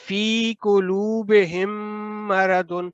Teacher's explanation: ادغام مطلب ہے ملا کر ادا کرنا ہے، دونوں میم جو ہے ایک دوسرے کے اندر مدغم ہو جائیں گے، تو آپ نے ملا کر پڑھنا اور غنہ کے ساتھ پڑھنا ہے جب بھی میم کے بعد میم مشدد آ جائے کسی بھی حرکت کے ساتھ۔ · یہ جو میم ساکن کے بعد میم آ گیا تو آپ نے پھر ہم مرض لمبا کر کے 2 سیکنڈ ادا کرنا ہے